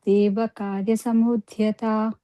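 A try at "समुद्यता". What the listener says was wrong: No, Samudhyata. It looks like the dha, but it is actually just like Vidya, Samudhyata. There is no H sound. DHY.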